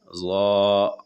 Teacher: زبان کے دونوں کنارے کو اوپر والا دانتوں سے لگا کر ظا ادا ہوتے ہیں. ظا، اور آواز موٹی ہوتی ہے.